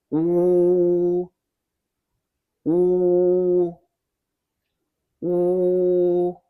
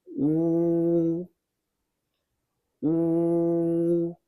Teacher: The ooh sound is like the double O in food with your lips rounded and pushed forward slightly.